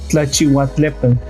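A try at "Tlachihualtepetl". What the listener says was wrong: Te faltó un poco la L, la pronunciación al último.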